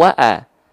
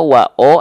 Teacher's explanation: kalau vokal A dia huruf yang tipis, kalau vokal O dia huruf yang tebal.